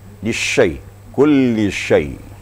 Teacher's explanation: Shin memang sifatnya tafashi, menyembur ya. Agak menyebar suaranya. Berbeda dengan sin. · Jadi tempat keluar hurufnya adalah shin itu di tengah-tengah lidah dan di tengah-tengah langit-langit atas. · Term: huruf shin